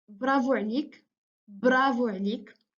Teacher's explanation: we have the sound b, which is a voiced bilabial plosive